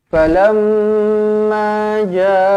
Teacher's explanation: Falamma mim sabdu, rapatkan bibir, dengungkan 2 harakat di sini, wajibul gunnah.